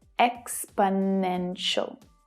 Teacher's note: The third is the strongest, though the first one is also stressed. The remaining 2 syllables are unstressed, so they reduce down, they become the schwa sound, which is always short and low in pitch.